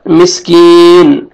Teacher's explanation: काफ को बारीक पढ़ेंगे और या मद्दा है, या जज़म से पहले एक जेर है, आपने 1 अलिफ के बराबर यानी 1 सेकंड आपने खींचना है। और जब स्टॉप करेंगे नून साकिन हो जाएगा